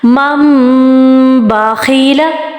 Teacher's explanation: نون ساکن کے بعد میم بعدی، نون کے اوپر اسمال میم ہے اور دین با آ رہا ہے. نون ساکن کے بعد با آ رہا ہے تو ہم نے نون نہیں پڑھنا، ہم نے میم کو میم کے ساتھ جوائن کرنا ہے